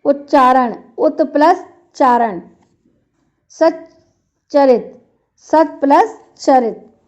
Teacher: यदि ता या द के बाद च या छ हो तो ता या द का च हो जाता है